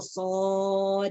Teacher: Sod. Ya, panjangnya juga 6 harokat. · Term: mad lazim harfi mukhaffaf